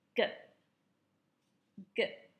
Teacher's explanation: is the very back section of the roof of your mouth the back of your tongue raises up to touch the velum